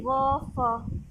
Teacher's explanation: ठीक है। देन आता है दंतोष्ठ्य, निचले होठ और ऊपर के दांतों से, मतलब कि इसमें निचले होठ, नीचे का होठ और ऊपर के दांत लगेंगे।